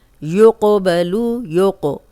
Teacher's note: काफ पे जज़म है हिला के पढ़ें। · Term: कलकला